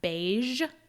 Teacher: The soft J, which is the zh sound, doesn't come up much in English, but that would be the sound in the word beige